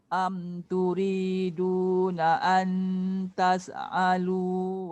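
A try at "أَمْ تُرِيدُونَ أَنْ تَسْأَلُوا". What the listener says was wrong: Okay, jaga sin. Jangan tas'alu.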